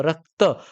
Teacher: आधीच अक्षर जरी सुद्धा रस्व असेल तरी सुद्धा ते काय असतं नंतरच अक्षर हे जोड असल्यामुळे त्याच्यावरती आघात थोडासा जास्त होतो म्हणून त्या ठिकाणी ते गुरु बनत जस अक्षर गणवृत्तामध्ये आपण पाहिलेल